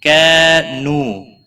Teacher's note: کانو دونوں کو ایک ایک الف کے برابر کھینچ کر پڑھیں گے۔ کا الف مدہ ہے، نو واو مدہ ہے۔